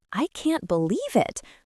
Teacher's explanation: with a rising excited tone, you feel their surprise